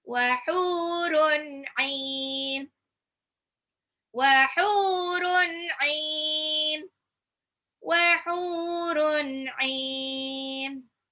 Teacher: tanwin ketemu ain itu izhar, dibaca jelas, enggak ada gunah-gunah atau ditahan